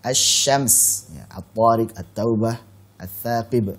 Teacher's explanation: dia lam itu ada tapi apa? Hilang, tidak terlihat lagi, tidak terbaca lagi. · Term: melebur